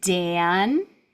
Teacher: My voice starts with the D and keeps going through the vowel and through the N.